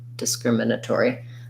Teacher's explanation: you have a little light unstressed first syllable